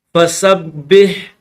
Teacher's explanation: با کے اوپر تشدید ہے اس لیے اس کو دبا کر زور لگا کر پڑھیں گے۔